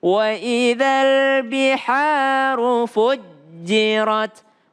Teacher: Fu, janya tasdid, maka ja ada tekanan.